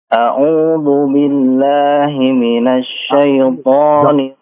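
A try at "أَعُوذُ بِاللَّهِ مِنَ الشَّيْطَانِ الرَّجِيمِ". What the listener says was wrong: Tapi du, dalnya tipiskan ya. Du, jangan do. Jangan do, jangan tebal nih. Jangan a'udzu billah. Jangan. A'udzu, tipiskan. A'udzu, dalnya tipis.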